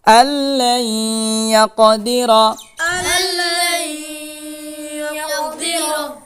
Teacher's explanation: কলকলার ডানে হরকত আসছে, ধাক্কা দিয়ে পড়িতে হয়।